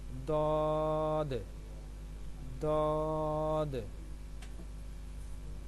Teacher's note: زبان کی کروٹ اور اوپر کی داڑھوں کی جڑ سے ادا ہوتے ہیں